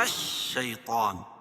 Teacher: طا کو پر پڑھیں گے کیونکہ حروف مستعلیہ میں سے